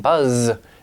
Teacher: that gum Ridge area and it's creating friction but for the there's vibration coming from your vocal cords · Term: voiced consonant